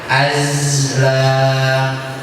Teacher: Kalau za emang kepada huruf rokhawah, emang dialirkan suaranya